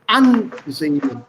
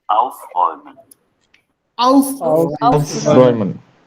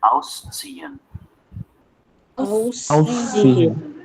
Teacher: Also der Wortakzent liegt auf die ersten Silbe.